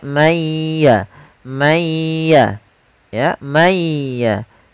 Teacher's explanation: suara nunnya dihilangkan sebagian tapi masih menyisakan sedikit huruf nunnya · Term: idgham